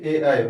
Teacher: ए ऐ जो है हमारे कंठ और ताल दोनों से बोला जाता है। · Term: कंठ तालव्य